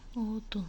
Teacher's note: Qalın və ya incə saitlərin bir-birini izləməsinə. Biz baxırıq ki, odun sözündə qalın saitlər bir-birini izləyibdir və biz deyirik ki, odun sözü ahəng qanına tabedir. · odun sözündə saitlərinə baxırıq. O qalındır, u qalındır.